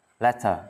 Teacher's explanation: Letter, chữ R sau không đọc.